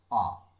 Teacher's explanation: আ উচ্চারণ করতে গেলে জিভটা আমাদের সামনেও যাচ্ছে না, জিভটা পেছনেও যাচ্ছে না, মধ্যবর্তী স্থানে থাকছে। তাহলে জিভকে মধ্যবর্তী স্থানে রেখে যে স্বরধ্বনি উচ্চারণ করা হয় তাকে বলা হয় কেন্দ্রীয় স্বরধ্বনি।